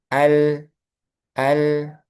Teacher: lam itu tengah-tengahnya. Enggak pendek, enggak panjang tengah-tengahnya. Ya, Al. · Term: bainiah